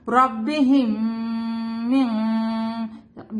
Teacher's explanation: جب میم ساکن کے بعد میم آتا ہے تو ہم ملا کے غنہ کر کے پڑھتے ہیں